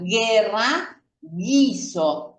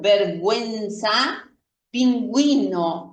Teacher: Aquí la U es muda, guerra, guiso. Aquí pronuncio la U, vergüenza, pingüino. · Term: U muda